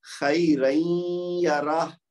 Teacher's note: وہ تنوین کو یا کے اندر ادغام کر دیا